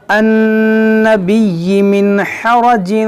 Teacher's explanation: نون میں غنہ کریں گے, یا کو 2 بار پڑھیں گے